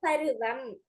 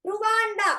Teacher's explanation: உகரமானது முழுமையாக ஒலிக்கும். ஊ என்ற ஒரு மாத்திரை ஃபுல்லா கேட்கும். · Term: முற்றையலுகரம்